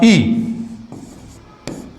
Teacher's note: तो ई का उच्चारण ऐसा लग रहा है कि आपके जीभ के आगे वाले भाग से हो रहा है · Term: अग्रस्वर